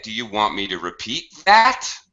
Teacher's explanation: using a higher pitch at the end of his sentence